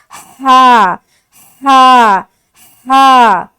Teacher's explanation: جب بھی اس حرف کو ادا کریں گے حلق سے ایک ہوا کی سی آئے گی